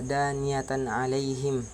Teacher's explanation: apabila tanwin bertemu dengan huruf ain, maka cara membacanya jelas dan terang. Kemudian pada lafaz alaihim terdapat hukum bacaan madlain, yaitu apabila ada huruf yang berharokat fathah bertemu dengan huruf ya sukun, maka cara membacanya dilunakkan. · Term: izhar khalqi